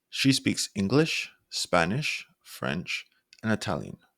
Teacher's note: your voice Rising on each language that's listed